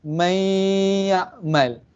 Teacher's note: Kita kena dengung. Dengung tu bunyi dia keluar daripada hidung.